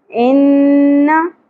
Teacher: نون مشدد ا گیا غنہ کریں گے زبر کو زیادہ نہیں کھینچنا انا فع دونوں سنگل حرکات ہیں